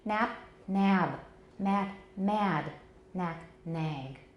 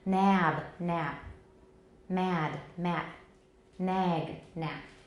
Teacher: we need to lengthen, and that vowel lengthening is even more important than voicing the final obstruent